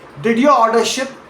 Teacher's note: Now say, did your order ship as a yes or no question and let your pitch climb upward on that final word, ship, rising at the very end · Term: yes or no questions